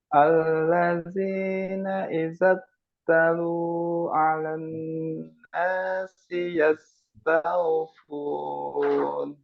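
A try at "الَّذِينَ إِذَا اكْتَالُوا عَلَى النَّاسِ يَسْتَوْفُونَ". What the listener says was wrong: Tanya panjang, Mbak, dan kafnya sifatnya dikeluarkan. Idak talu, jangan idak talu. Nah, tanya panjang juga. Idak Idzak talu.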